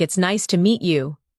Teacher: Notice the rise and fall of the tone. The voice goes up slightly at nice and falls gently at you.